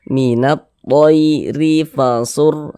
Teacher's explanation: Jadi huruf ra memiliki harokat kasroh, dibaca tipis, baca tarkik, sehingga pangkal lisan kita tidak naik terangkat ke atas, tipis huruf ra-nya.